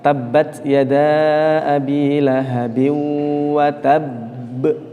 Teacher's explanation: di sini ada huruf ba yang memiliki sifat qalqalah. Maka membacanya harus dipantulkan.